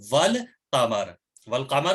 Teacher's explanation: लाम को पढ़ा, वाव को लाम से मिलाया लेकिन अलिफ को तलफ्फुज नहीं किया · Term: हरूफ कमरी